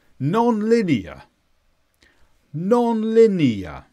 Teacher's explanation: This is an adjective, and we actually stress the first two sounds.